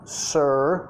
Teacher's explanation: no quieres dejar tu lengua tocar arriba porque vas a decir ser, la R de español